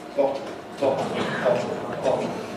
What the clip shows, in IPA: ˈbɒtl̩